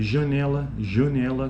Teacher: a vogal nasal aqui no caso a nasalidade é bem percebida